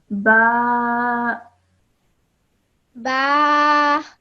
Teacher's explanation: the ba has a vertical fatha on it. That is why we have elongated the sound of ba for 2 seconds.